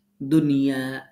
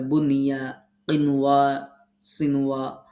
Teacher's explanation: তাহলে ইয়া ওয়া মিম নুন র লাম এগুলো ইদগামের হরফ আমরা জানি, বাট এই ইদগামের হরফগুলো যদি নুন সাকিনের পরে একই শব্দের মধ্যে আসে, আবারও বলছি একই শব্দের মধ্যে আসে, তাহলে এখানে ইদগামের নিয়ম প্রযোজ্য হবে না। এটা হচ্ছে, এটাকে ইজহারে মুতলাক বলা হয়, এটা গুন্না ছাড়া পড়তে হয়। · ইয়া ওয়া মিম নুন র লাম, হ্যাঁ, এই 6টি হরফ যদি নুন সাকিন ও তানবিনের বামে একই শব্দের মধ্যে আসে, একই শব্দের মধ্যে আসে, তাহলে নুন সাকিনের উচ্চারণ স্বাভাবিক নুনের মতো হবে, এখানে ইদগামের বিধান প্রযোজ্য হবে না।